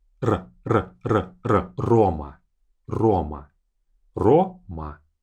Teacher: So the first R, as you can hear, I say Roma. One vibration of my tongue to my palate for the R sound.